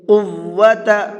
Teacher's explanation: یہ بڑا قاف ہے، اس کو پر کر کے پڑھیں گے